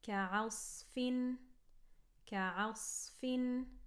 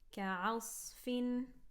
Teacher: we don't want to make this ayn heavy, and you don't want to make that kaf heavy as well.